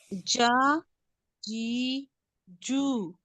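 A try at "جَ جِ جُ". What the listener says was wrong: जी लंबा नहीं करना, सिर्फ जेर है तो जेर को हमने जी अगर हम करेंगे ना, देखें जी कैसे बन जाएगा, जीम जेर या जी।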